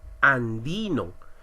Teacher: La mayor fuerza de voz la tenemos en di. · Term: acento prosódico